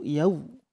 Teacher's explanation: Ketika membaca yaumiddin, maka bibir mencucu yau. Kemudian di makhraj dal tidak sampai keluar anginnya.